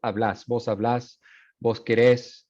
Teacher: you switch the stress to the last syllable. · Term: voceo